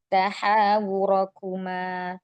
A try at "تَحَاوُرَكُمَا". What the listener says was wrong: Tahawurakuma. Tahawurakuma. Tahawurakuma. Hanya masih tebal ya Tahawurakuma.